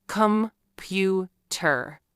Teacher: For example, the word computer has 3 syllables, com-pu-ter, but we don't say them all equally. We stress the middle syllable, com-pu. If you stress the wrong syllable, the word may sound strange or confusing to native speakers.